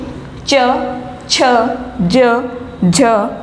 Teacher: इन सभी का आप उच्चारण करके देखिए, च, छ, ज, झ, इन सभी में जो हमारी जीवा है वो ऊपर मूर्धा की तरफ, तालव्य की तरफ स्पर्श कर रही है, और साथ में जब वायु बाहर निकल रही है तो वो संघर्ष के साथ बाहर निकल रही है, इसलिए इन्हें स्पर्श संघर्षी व्यंजन कहा जाता है।